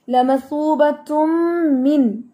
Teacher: मिन लंबा बिल्कुल भी नहीं करेंगे, नहीं तो वो वहां पर गुन्ना हो जाएगा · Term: इजहार